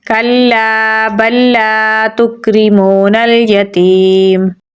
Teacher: آیت لگانے کی صورت میں میم کی زبر کو ساکن کر دیں گے تو پڑھا جائے گا کلا بل لا تکرمون الیتیم۔ · لام کو لمبا پڑھیں گے کیونکہ اس کے آگے الف مدہ ہے۔